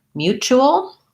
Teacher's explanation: then we have a dark l with a schwa